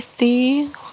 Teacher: thi kasroh bertemu dengan ya sukun adalah mad tabi'i, dibacanya panjang 2 harokat. Kemudian minhum nun sukun bertemu dengan ha, ini adalah hukum tajwid dari idhar.